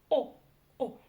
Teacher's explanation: За основу нужно взять букву О, обыкновенную, но прочитать её очень и очень коротко.